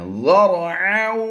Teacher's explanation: ذال کو را سے نرمی سے ملا کر را کو پر کرنا ہے